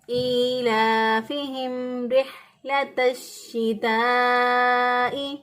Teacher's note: جب حروف مدہ کے بعد حمزہ ایک ہی کلمے کے اندر آ جائے، اب شتائی اس کا یہ حمزہ جو ہے اس کا حصہ ہے، تو پھر ہم یہاں پر الف مدہ کے بعد جب حمزہ آ گیا ہے اور حمزہ اسی کلمے کے اندر ہے تو ہم اس کی مقدار توسط کریں گے. توسط کا مطلب ہے دو الف کے برابر اور 4 حرکت کے برابر اس کو ہم پڑھیں گے